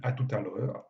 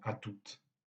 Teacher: le mot tout en général est prononcé sans le T final, mais à cause de la liaison, on dit à tout à l'heure. Et on maintient la prononciation du T même dans l'abréviation à toutes.